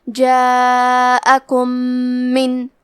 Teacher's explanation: ہم میم ساکن کو دوسرے میم میں ملا کے ایک ہی میم غنہ اور تشدید کے ساتھ پڑھیں گے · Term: ادغام